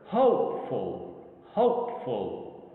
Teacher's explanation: if you listen to how this word is pronounced hopeful, you'll find like the H and O sounds, ho, the ho sound here is like dominant over the rest. It's heard clearer